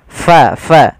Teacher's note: untuk huruf Fa harus hati-hati harus alirkan nafasnya Jangan sampai kita merubahnya menjadi palaqo diganti dengan p maka di sini jangan sampai diganti dengan P tapi pakai f